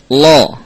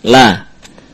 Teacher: Lam dibaca dengan mustafilah atau muraqqaqah, tipis.